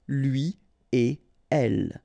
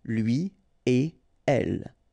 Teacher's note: So after this conjonction et, like we've got here, you don't make any liaison. So no links after et.